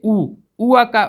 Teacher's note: ऊ का जब आप उच्चारण करते हैं तो आपकी मुख की आकृति कैसी हो जाती है, गोल हो जाती है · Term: वर्तुल स्वर